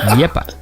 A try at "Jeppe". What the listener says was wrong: It sounds like you pronounce it with Y. That's not a Y. It's a J.